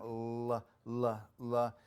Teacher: your tongue goes up flat, and then the air comes out the sides of your tongue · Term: laterals